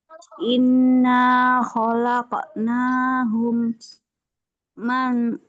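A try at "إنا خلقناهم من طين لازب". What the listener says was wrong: Min, min, bukan man, min.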